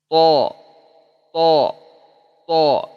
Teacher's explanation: Rasakan. Tekan di ujung, dari ujung lidah ke pangkal gigi seri atas.